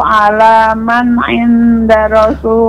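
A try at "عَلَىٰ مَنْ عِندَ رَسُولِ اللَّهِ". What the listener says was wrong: Ala man 'inda. Ikhfa, tidak lengket lidahnya ke langit-langit namun mendekati ala man 'inda rasulillah.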